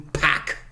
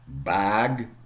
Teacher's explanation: and then you see you switch on your vocal cords